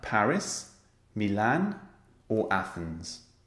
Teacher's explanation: or Athens you hear the rising Rising and then falling intonation the final item is always falling intonation